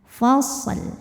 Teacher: Shad punya sifat shofir artinya berdesih seperti suara ular nah dalam membunyikan Shad sukun kemudian belakangnya ada lam yang dimatikan · Nah dalam membunyikan shad sukun kemudian belakangnya ada lam yang dimatikan, maka shadnya ini hati-hati terpantul, bukan liyaumil fasl, bukan fasl. Shadnya bukan dipantulin melainkan dialirkan, fasl. Lamnya harus kebaca · shad punya sifat shofir, artinya berdesis seperti suara ular